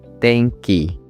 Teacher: As you can see it's just opposite of han. It starts high and stays low for the rest of the word. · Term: atamadaka